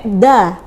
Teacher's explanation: ujung lidahnya tidak digigit maka bunyinya dah